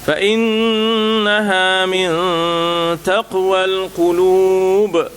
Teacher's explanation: Nun berjumpa dengan ta, ya, ada ikhfa, jangan lupa kita nak kena dengungkan, ya.